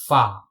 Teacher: wet area of lower lip touches the tips of the 2 upper central incisors. This is the articulation point for fa.